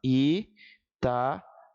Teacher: Vejam que as vogais aqui, elas não são uma fraca e uma forte, percebe? Eu tenho dois sons fortes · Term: hiato